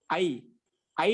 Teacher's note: కంఠస్థానం రెండోది ఏంటి ఐ ఐ లో ఉంది కంఠాల ఏదైతో కంఠ తాలవ్యో ఈ ఐ వర్ణాన్ని వచ్చి కంఠము తాలు రెండు కావాలి